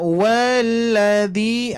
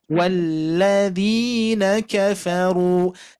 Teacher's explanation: Tapi kalau kita sudah tahu sekarang idgham itu langsung masuk ke huruf lamnya.